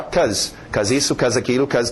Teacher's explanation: em pronúncia rápida nós vamos ver o be sumir. E as pessoas geralmente falam só cause isso, cause aquilo, cause, ok?